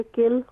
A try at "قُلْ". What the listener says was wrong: قل. کل نہیں ہوگا، قاف موٹا قاف ہے تو قل ہوگا.